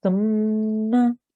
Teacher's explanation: when you say it, make sure you're trying to blow some air from your nose. So you need to use your nasal pipe a little bit.